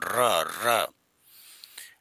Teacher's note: साहब र र वाइब्रेशन करता है प्रक कंपन होता है और र को बोलते समय जीभ लुड़क है इसलिए इसको लुंठित कहते हैं · पित व्यंजन प्रक पित व्यंजन का मतलब ना कंपन होता है र बोलेंगे ना तो वाइब्रेशन होगा